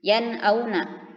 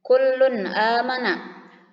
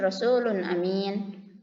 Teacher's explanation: فالنون تخرج من طرف اللسان مع لثة الثنايا العليا. Maka nun itu makhrajnya keluarnya dari antara ditempelkannya lisan lidah dengan lithat tsanaya ulya, gusi gigi atas ya, di sini di belakang. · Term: إظهار حلقي